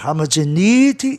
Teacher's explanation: A sílaba tônica fica no E de NE